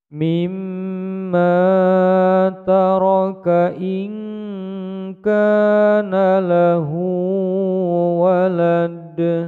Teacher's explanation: Dal yang disukunkan di akhir bacaan menjadi qalqalah kubra